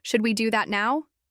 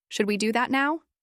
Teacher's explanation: she learned to say, Should we do that now? with a little rise